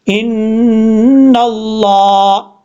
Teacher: नून के ऊपर शद है, गुन्ना करेंगे, 1 अलिफ की मिकदार, आगे लफ्ज़ अल्लाह को पुर पढ़ा जाएगा क्योंकि लफ्ज़ अल्लाह से पहले नून के ऊपर ज़बर है।